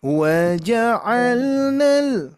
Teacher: Wa-nya direndah dulu, Bu.